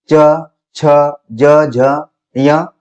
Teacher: च, छ, ज, झ, ञ और य, श ये तालव्य के अंतर्गत है